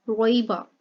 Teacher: यहाँ पे या के ऊपर साकिन है और पीछे ज़बर है, तो या लीन हो रही है, ठीक है, लेकिन लंबा नहीं करेंगे